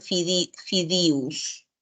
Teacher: fideos pero en la sierra se suele se suele cambiar y en vez de decir eo dicen iu entonces dicen fidus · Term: confusión vocálica